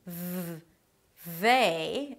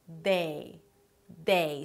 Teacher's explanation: 'th' 'think' That's the voiceless th and it's substituted with a T sound, in comparison to 'th' 'they' The voiced th, which is substituted with a D sound. 'day' 'day' So make sure that the tongue is out and it's soft and you allow the air to pass.